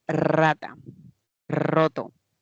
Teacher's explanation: el ápice se aproxima a los alveolos